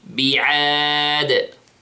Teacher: Notice the sound of the dal. It has a qalqala.